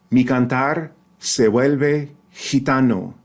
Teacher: Notice that both V's and vuelve are that fricative or approximant B, right? Not the hard B in bomb, but the softer B, right? Where your lips don't close all the way.